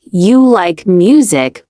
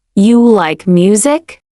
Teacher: For native English speakers, a sentence like, "You like music with no rise in pitch sounds like a fact." But when you ask it with a rising tone, you like music. · when you ask it with a rising tone, You like music? Now it's clearly a question.